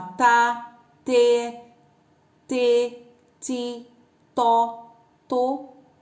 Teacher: nessa sílaba tá o som é sem motor na na garganta é um som fraco fino curto a garganta não treme